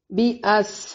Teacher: बी अस, बा को बारीक, अस सीन को सीटी के साथ